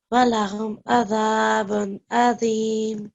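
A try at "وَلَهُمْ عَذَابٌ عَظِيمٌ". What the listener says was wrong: Very nice recitation.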